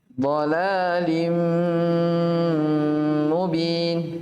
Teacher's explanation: namanya didengungkan sekitar 2 harokat